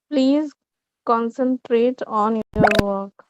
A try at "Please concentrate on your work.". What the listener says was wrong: Okay. Correct.